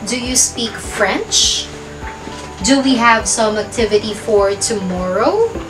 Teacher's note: Lahat sila ay rising intonation or pataas yung intonasyon ko nung binasa ko.